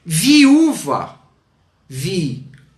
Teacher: Tenho duas vogais juntas em sílabas separadas. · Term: hiato